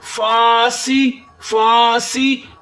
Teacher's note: سین کے نیچے زیر ہے، سین کو سیٹی کی آواز دیں اور سین کو نیچے زیر ہے، سی بغیر کھینچے پڑھیں